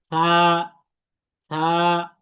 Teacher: সা এর মাখরাজ হচ্ছে এই যে জিহ্বার আগা এবং দাঁতের আগা